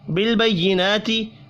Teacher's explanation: نون کے اوپر کھڑی زبر ہے، ایک الف کے برابر کھینچ کر پڑھنا ہے